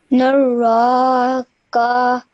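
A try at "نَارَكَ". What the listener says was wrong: When you read this ka over here, it has a simple fatha, so only do it for 1 second or one count, okay? Naraka. And well done, you ignore this bit over here. So this is called the blank bend. So you would ignore it and you straight away went on and pronounced the ka at the end, okay?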